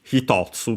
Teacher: Hitotsu, that becomes accented on the to, stays the accent technically on the to then, but with the addition of the tsu.